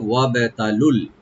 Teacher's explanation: ওয়াটাকে open করে বার সাথে মিলাইয়ে বাটাকে একটু কলকলা করতে হবে, ছোট কলকলা। তাটাকে ওপেন করে পড়বো আর লু একালিপ টানবেন যদি আমরা মিলাই না পড়ি, আর মিলাই করলে লামের সাথে টান হবে না।